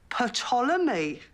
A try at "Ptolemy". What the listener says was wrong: The P is silent, as in psychopath. But it's from the ancient Greek. They had silent P's.